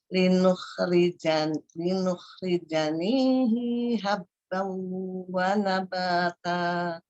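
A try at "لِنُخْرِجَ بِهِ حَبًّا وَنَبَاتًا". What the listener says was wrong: Linukhrijabihi. Bi ya, bukan ni. Linukhrijabihi. Cepat, harokat.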